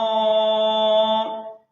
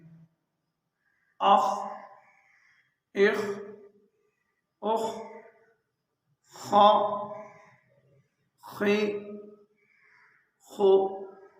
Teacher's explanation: اس کو حلق کے اس حصے سے آخری حصے سے ادا کرنا ہے